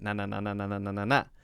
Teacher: the tongue is coming up behind the teeth not touching the teeth to the front of the mouth on the roof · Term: n sound